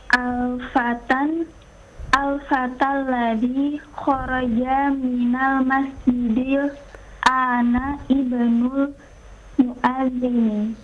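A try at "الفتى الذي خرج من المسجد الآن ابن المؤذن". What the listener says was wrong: Ibnul muadzini, bagus. Baca sekali lagi.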